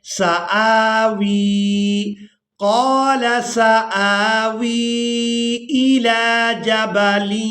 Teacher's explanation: حمزہ کو کھڑی زبر کی وجہ سے کھینچ کر ادا کرنا ہے اور اس کے بعد واؤ کو یائے مدہ کی وجہ سے کھینچ کر ادا کریں گے